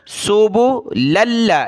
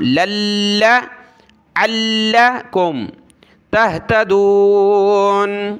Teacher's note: لام کو لام کے ساتھ ملائیں گے، اس الف کو نہیں پڑھنا